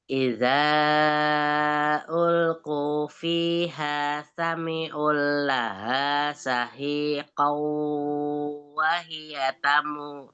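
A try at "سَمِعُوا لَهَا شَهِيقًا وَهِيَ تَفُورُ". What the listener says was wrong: Sami'u nggak ada lam sukunnya yang sami'u laha syahiqaw wahia tafur. Sami'u. tadi sami'ul. Sami'u ada mat. Sami'u ada matnya. Sami'u laha syahiqaw wahia tafur. Hak yang bawah. Pakai shin yang tafas itu. Laha laha syahiqaw.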